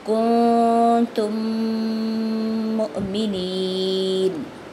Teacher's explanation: وَرَسُولَهُ إِن كُنتُم مُؤْمِنِينَ، ٹھیک ہے، پہلے بھی اخفاء، بعد میں بھی اخفاء، اور یہاں دونوں میمیں آپس میں مرج ہو رہی ہیں، تو یہاں کیا ہے، ادغام، ٹھیک ہے۔ ادغام بالغنہ، ناک میں آواز کرتے ہوئے غنہ کرنا ہے، چھپاتے ہوئے ناک کی آواز کو، اور تھوڑا سا اسٹے کرتے ہوئے آگے جانا ہے۔